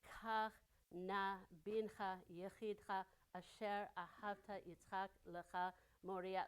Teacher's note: it reflects the Hebrew sound pattern with a pervasive ah sound of the vowels, of like the kamatz and the patach, those are both the ah vowels, right?